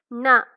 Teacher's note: நாக்கினுடைய நுனி மேல் அன்னத்தினுடைய நடுப்பகுதியை தொடுவதால் ந பிறக்கிறது